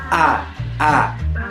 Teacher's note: È una vocale anteriore, quasi aperta, non arrotondata. Si legge cioè quasi come la lettera A, ma con la lingua leggermente più in alto.